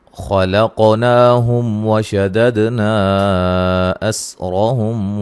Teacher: أمثالهم تبديلا۔ نحن خلقناهم، یہاں خا کو موٹا ادا کریں گے، قاف کو موٹا ادا کریں گے، قاف کو ہلائیں گے بھی، قاف ساکن ہے اور قلقلہ ہو رہا ہے ، نا مد اصلی ہے، ہم میم ساکن کا اظہار ہے،